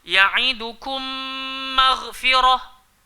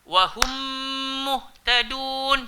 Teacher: mim yang pertama masuklah dalam mim yang kedua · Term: idgham syafawi